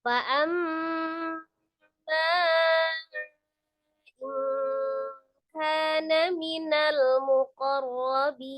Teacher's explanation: Ro sukun dan ro fathah. Sebelum ro sukunnya fathah di huruf qaf maka rohnya tebal, rohnya fathah juga tebal ya.